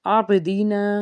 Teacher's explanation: عابدین، آئین کے بعد با ہے، با حرف قلقلہ کا حرف، جب ادا کریں گے قلقلہ کا لفظ تو آواز لوٹ کے آئے گی اب۔ دال زیر دی، نون الف زبر نا، الف سے پیچھے زبر، ایک الف کے برابر کھینچیں گے۔